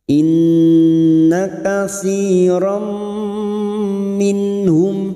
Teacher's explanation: Inna katsiram, sekarang kita wasol, maka fathah tanwin pada huruf ra masuk pada huruf mim dan mendengung selama 2 atau 3 harokat.